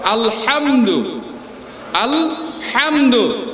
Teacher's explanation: হা এবং আইন কোথা থেকে উচ্চারণ হয়? গলার মাঝখান থেকে, গলার মাঝখান থেকে, হালকুমের মধ্যবর্তী স্থান থেকে। এই জন্য বলতে হয় আলহামদু, আলহামদু।